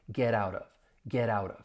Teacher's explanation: But not only that, you're going to hear me, with my American accent, pronounce those T's as a flap T because they come between two vowel sounds.